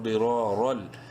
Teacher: ضرا را دو زبر را لام دو زبر رل. تنوین کے بعد لام یرملون میں سے ہے، ادغام بلا غنہ ہوگا